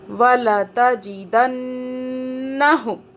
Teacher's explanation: نون مشدد یہاں ہم گنہ کریں گے